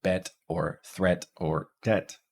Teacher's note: Epsilon our mid-front unrounded LAX vowel is the e sound as in bet or threat